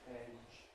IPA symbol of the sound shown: eʤ